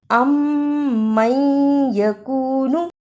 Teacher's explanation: دونوں میم کو ملا کر غنے کے ساتھ ادا کریں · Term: ادغام شفوی